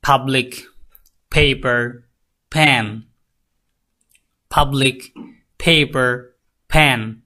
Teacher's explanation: দুই ঠোঁট একসাথে করেন এবং জুড়ে ধাক্কা দেন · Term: বাইলাবিয়াল